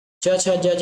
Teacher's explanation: च छ ज झ यह का उच्चारण तालु से होता है